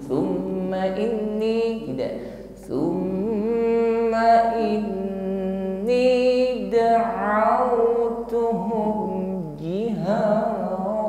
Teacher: ada mim tasydid, ditahan sejenak dan kita sempurnakan bunyi dengungnya. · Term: gunnah musyaddadah